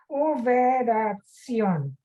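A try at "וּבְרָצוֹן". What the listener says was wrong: Just uveratson. There's no yud in between the tzaddik and the vav.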